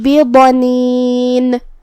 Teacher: جزم سے رکیں گے تو ہمیں نون کو ظاہر کرنا ہے